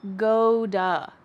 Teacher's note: the word to becomes da this is very common after the verb go